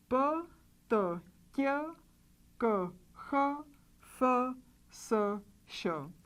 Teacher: Put your finger on your throat like this again and make these sounds p, t, k, k, h, f, s, sh. Because the vocal cords don't vibrate when we pronounce these consonants, we call these consonants non-vibrating or voiceless or unvoiced.